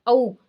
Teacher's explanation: होठ और कंठ दोनों के मेल से बन रही है, दोनों इसमें एक्टिव हो रहे हैं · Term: कंठोष्ठ्य